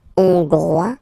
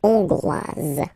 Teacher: final S not pronounced for the masculine form, and then you pronounce it here for the feminine form. Hongrois, hongroise.